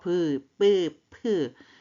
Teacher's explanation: 입술이 붙었다 떨어지는 브뿌 프. 얘들 보니까 막혔다 터져요. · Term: 입술 소리